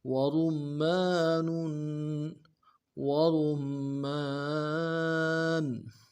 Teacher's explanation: وَنَخْلٌ وَرُمَّانٌ وَرُمَّانٌ، اگلے واو کو نون سے ادا کریں گے، را کو میم کے ساتھ ملانا ہے، را کو موٹا کریں گے، میم کے اوپر تشدید زور دیں گے